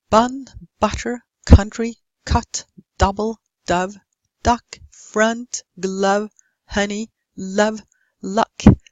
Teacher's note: note how all of these should not have lip rounding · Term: short ah